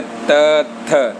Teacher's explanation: आपकी जो जीवा का अग्र भाग है वो आगे के ऊपरी दांतों को स्पर्श करता है और उसका उच्चारण होता है